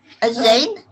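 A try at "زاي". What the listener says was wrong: Za. Za. You got the right sound, but the letter name is za.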